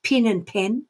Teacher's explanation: in texas it's pin and pen are actually the same words